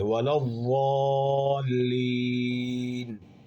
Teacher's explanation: سامنے والے بالکل نوک، اس زبان کی نوک ہے یہ، اور درمیان بالکل حافہ لسان، یہ جو 2 نشان بنے ہوئے ہیں، اس کے درمیان کا جو خالی حصہ ہے اس کو وسط لسان کہتے ہیں۔ تو حافہ لسان جب اوپر کے دانتوں کے داڑوں کے سے لگ جائے، یہاں سے ضاد ادا ہوتا ہے